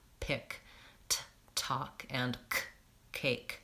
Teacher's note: I'm always gonna say it with a puff of air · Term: aspiration